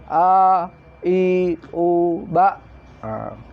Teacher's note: Hamzah ini adalah tempat tenggorokan paling bawah, pangkal tenggorokan.